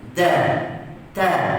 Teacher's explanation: Dan satu huruf lagi yang sama makhraj dengan dal dengan huruf ta ni, iaitu huruf ta. Makhrajnya sama, iaitu hujung lidah sentuh pada pangkal gigi atas ataupun antara gusi dan gigi atas.